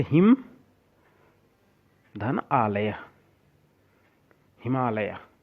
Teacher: जैसे हिम, धन, आलय, हिमालय। इसमें हिम के म के अंत में जो अ है और आलय के शुरू में जो आ है, दोनों वर्ण मिल करके आ बन जाएगा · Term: दीर्घ संधि